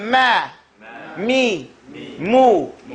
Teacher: It's all on the mouth, right at the exit part of our mouth, on our lips.